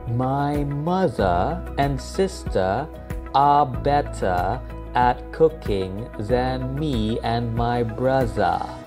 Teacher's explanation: Brits would pronounce ER as AH most of the time